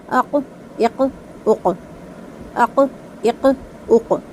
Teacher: काफ की आवाज जब निकाली जाएगी तो उसमें पहले हल्की सी एयर बाहर आएगी। लेकिन बहुत ज्यादा ध्यान रखना है कि काफ को साकिन पढ़ते हुए अक्सर लोगों लोग उसमें जो एयर निकालते हैं ना उसके साथ ह की साउंड ले आते हैं। · قاف حروف قلقلہ میں سے ہے، ہلا کر پڑھا جائے گا اور پر بھی کیا جائے گا